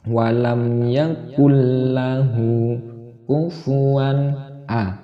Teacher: Langsung ditasdidkan, ditekankan lam. Nunnya itu tidak boleh mendengung. Yakullahu langsung dimasukkan atau ditasdidkan ke lam. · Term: idgham bila gunnah